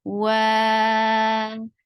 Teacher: The sound is very short. Wa, for wow, circle your lips and make it 4 counts long